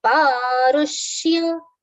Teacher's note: stress on ru, which is a short vowel sound